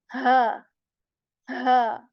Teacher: this ha comes from the lower portion of throat that is near to our chest